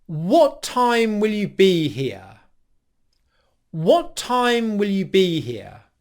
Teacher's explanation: we're going to use the downwards intonation and we're going to put here at the end of the question